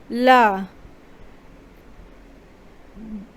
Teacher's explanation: ला बोलेंगे तो जैसे लगेगा ला, जीभ एक स्थान पर तालु से आके सट गई है और हवा अगल बगल से निकल रही है। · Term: पार्श्विक